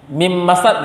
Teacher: Bunyi atau sifat dan bunyi nun sukun secara sempurna hilang. Yang dibaca adalah mim yang bertasydid.